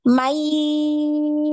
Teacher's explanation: dialirkan ainnya ya, jangan di hidung ya, di tenggorokan.